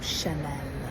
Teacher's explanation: дуже м'якенька в кінці ль наче з м'яким знаком